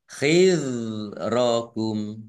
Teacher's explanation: Dzal domah wawu sukun mat tabi'i panjang 2 harokat. Dzal sukun bukan kolkolah, jangan dipantulkan.